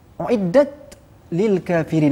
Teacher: ta maftuhah, maknanya tidak boleh ikhtilaskan dengan sin sikit.